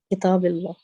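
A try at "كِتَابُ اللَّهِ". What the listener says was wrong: اس کتاب کے نیچے آپ زیر کیوں لگا رہی ہیں؟ کتاب اللہ ہی, اس کے نیچے زیر لگائے نا, اس کے نیچے وجہ ہے زیر لگانے کی. اس کی تو کوئی وجہ ہی نہیں ہے نا زیر لگانے کی.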